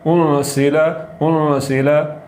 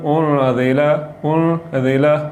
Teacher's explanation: تو زا کو پڑھتے ہوئے سیٹی کی آواز نکلے گی، تھوڑا سا زور لگے گا، انسیلا یہ لفظ زا کے ساتھ یہ ٹھیک ہے۔